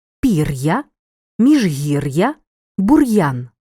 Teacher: солов'їний у слові ллється апострофа немає натомість пишемо дві букви Л апостроф ставимо після літери р що позначає твердий звук р при цьому чуємо роздільну вимову